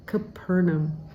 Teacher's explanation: you want to put the emphasis on the second syllable